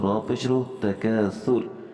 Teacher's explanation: را کے اوپر پیش ہے، لہٰذا ہم یہاں را کو موٹا پڑھیں گے۔ دونوں صورتوں میں ملا کر بھی اور وقف میں بھی۔